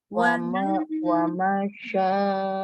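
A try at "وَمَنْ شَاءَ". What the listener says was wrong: Waman, dengung. Waman, ya. Bukan wamasya. Nun ketemu shin, ini ikhfa. Jadi waman sya, dengung. Bukan wamasya, lagi masih dibaca wamasya. Ditahan, mannya ditahan. Waman. Waman sya, ayo. Masih wamasya. Ditahan. Wamasya.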